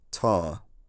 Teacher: In the 1700s, workingclass people in London, which was where some of the red culture now lived, started to drop the R sound and had retracted the a sound, giving something like tar.